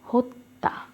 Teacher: সে দীপ্ত করে দেবে যেমন এখানে আছে দুটো ত হয়ে গিয়েছে জ ফালার উচ্চারণ নেই কিন্তু ত কিন্তু দুটো হয়েছে